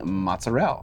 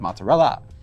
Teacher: all these interesting pronunciations involve dropping the last vowels of the Italian words, like saying mozzarella instead of mozzarella.